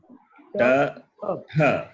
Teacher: When you say ta, the second letter, you expel more air, right? We breathe out. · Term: Mahaprana